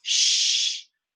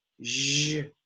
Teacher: j is like sh, shh, but you put voice, j.